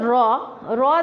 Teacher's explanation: এইগুলো হচ্ছে অন্তস্থ ধ্বনি তারপরে এর মধ্যে হচ্ছে র র দেখো র যখন বলবো আমরা তখন কি হয় আমাদের জিহ্বাটা কি একটু কম্পন সৃষ্টি করে না এজন্য একে বলে কম্পন যার ধ্বনি ল ল বলতে গেলে আমাদের